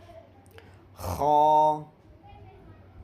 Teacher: خا کا مخرج آخر حلق سے خا ادا ہوتا ہے۔